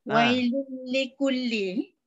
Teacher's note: Kita dah belajar kamil kan, sempurna dengan tanpa dengung. Jadi tanwin bertemu dengan lam, idgham bila gunnah kamil tanpa dengung